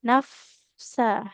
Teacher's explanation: Jadi yang menempel itu bibir bawah itu nempel ke gigi gigi atas bukan bibir dengan bibir. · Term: huruf fa